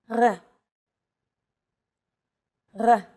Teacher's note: It's actually closer to the German or French R, but without the roll.